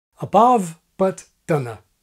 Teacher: yet another accent with no weak comma vowel